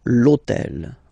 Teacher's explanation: this otel okay because it starts with Ash but remember that in French we don't pronounce Ash okay so basically the first sound of the word is the vowel O